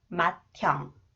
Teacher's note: when 히읗 comes after the final consonant 디귿 combined with 히읗, it sounds as 트 sound